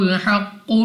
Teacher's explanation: قاف مستعلی میں سے ہے، تو ہم اس کو موٹا پڑھیں گے، اور قلقلہ میں سے بھی ہے تو خوب جماؤ کے ساتھ ادا ہوگا۔